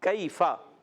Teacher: یا ساکن سے پہلے زبر آ گیا، یالین، کیفا، تو کیا کریں گے، اس کو ہم نرمی سے ادا کریں گے